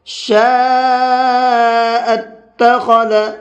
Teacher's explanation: فمن، اس طرح سے۔ شاء اتخذ، شین کو بھی 4 سے 5 الف کے برابر کھینچ کر کے پڑھیں گے